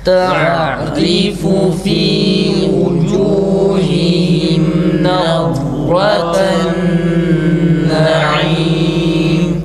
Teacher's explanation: Ra kalın nazraten ra kalın ah sesiyle çıkması gerekir.